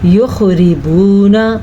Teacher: اب یہ را باریک پڑھیں گے کیونکہ اس کے نیچے زیر ہے